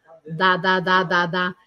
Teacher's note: eu sinto um certo estalo da minha língua no céu da boca atrás dentes de cima